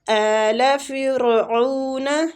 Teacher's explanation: را کسرہ کی وجہ سے باریک پڑھیں گے